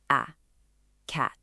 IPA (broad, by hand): æ